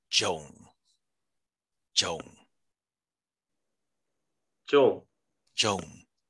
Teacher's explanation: You might hear an M, but Burmese words don't have ending consonants